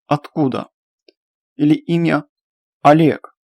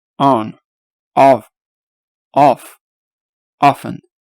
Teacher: при произношении форма рта, то есть форма губ, более открыта и слегка напоминает звук от нашей буквы А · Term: большая О